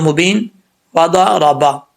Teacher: ضاد حروف مستعلیہ میں سے ہے، اس کو پر پڑھا جائے گا